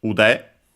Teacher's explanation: It's a compound, a noun, from ude, accented on the last syllable.